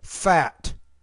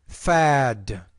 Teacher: But when the T's at the end of the word, the vowel sound is shorter.